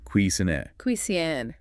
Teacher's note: It's a French word, so the stress is on the second syllable.